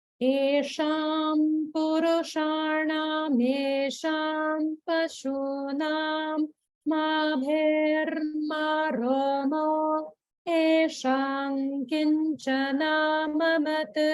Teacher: notice the small gap after mo and before esham